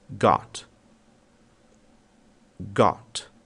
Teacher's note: Ou seja, normalmente o Rzinho não é ouvido. O próximo som é o som de O, mas é um O curto. Notem que não há um prolongamento dessa vogal.